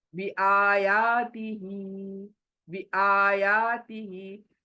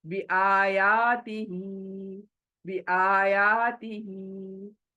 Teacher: जो जल्दी है वो बी है और ती है, और ये आ खींचना है, या खींचना है, ही खींचना है।